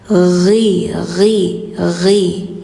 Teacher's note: ya mengalir jadi jangan gi tapi ghi ghi